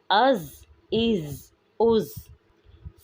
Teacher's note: زا حروف صفیریہ میں سے ہے، اس میں سختی پائی جاتی ہے